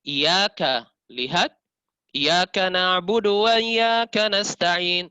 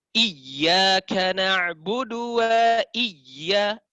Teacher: mengangkat intonasi suara ketika dibaca menunjukkan bahwa yang dibaca itu adalah dalam kondisi bertasydid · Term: Nabar